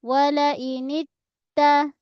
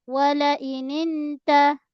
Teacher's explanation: Pada ta mesti tahan suara kita hold sekejap.